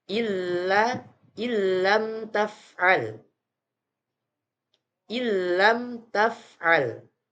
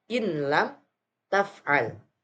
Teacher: nun sukun bertemu dengan huruf lam cara bacanya yaitu sama dengan memasukkan suara huruf nun sukun ke huruf lam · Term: idgham bilagunna